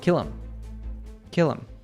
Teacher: With pronouns like him, her, and them, we natives usually drop the first sound. · the L sound from kill links to the I sound